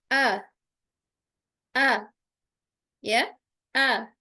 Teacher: tidak ada aliran suara pada huruf hamzah ketika sukun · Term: jahr pada Hamzah